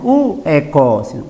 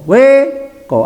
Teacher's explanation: en la palabra hueco acá sí forma una sola sílaba la u con la e porque no decimos u eco ue co ahí está la e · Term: diptongo